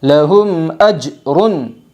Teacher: جیم زبر اج را دو پیش رن اجرن اظہار شفوی ہوگا میم ساکن کے بعد حمزہ آئی ہے اس لیے میم ساکن کو ظاہر کر کے پڑھے گی